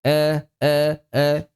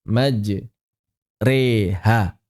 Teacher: Jadi antara A dengan E. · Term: al imalah